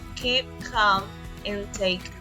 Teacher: the sound is called the voiceless velar stop · The K sound is called the voiceless velar stop or plosive. That means that you use the back of your tongue to block the airflow from your throat.